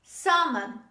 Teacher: the l is dropped when you say this word